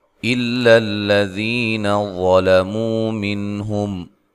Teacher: یہ دونوں جو لام ہیں ان کو باریک پڑھنا ہے، ٹھیک ہے۔ ذی یا مدہ ہے، ظلموا، وا کو موٹا ادا کرنا ہے، لام کو باریک پڑھنا ہے، مو و مدہ ہے، من نون ساکن کا اظہار ہے، اور یہاں ہم میم ساکن کا اظہار ہے، یہاں غنہ نہیں کریں گے ملانے کی صورت میں۔